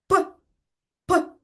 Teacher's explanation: Горлечко не бринить і не вібрує. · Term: звук П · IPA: [п]